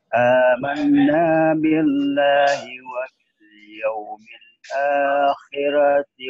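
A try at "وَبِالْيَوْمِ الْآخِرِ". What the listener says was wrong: akhiri. Bukan akhirat, ini ayat lain. Wa bil yaumil.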